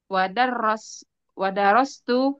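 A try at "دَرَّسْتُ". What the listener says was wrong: harus jangan dihilangkan tasdidnya enggak boleh darastu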